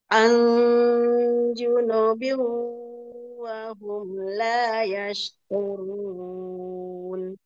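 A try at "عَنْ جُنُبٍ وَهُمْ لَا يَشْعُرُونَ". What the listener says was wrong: Tinggal huruf ainnya satu lagi ya. Huruf ainnya disempurnakan Bu, dicari makhrajnya yang pas di mana ya, di wastul halqi.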